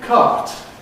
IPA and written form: kɑːt (cart)